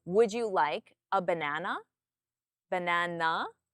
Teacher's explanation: So you may already understand this concept because when you ask a question in English, a yes or no question, you have a rising intonation, which means the tone of your voice rises · So my tone comes up at the end.